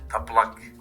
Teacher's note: So the L, first L is said at the front of the mouth, like a labial, le. And the l is said more at the back of the throat, back of the mouth. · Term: double L sound